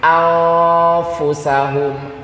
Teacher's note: Ujung lidahnya nggak kemana-mana, malah langsung ke tempatnya huruf fa. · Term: ikhfa